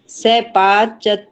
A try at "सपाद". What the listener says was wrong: वो थोड़ी सी आपकी वो है ना हरियाणवी, से सपाद नहीं, सपाद, सीधा सपाद।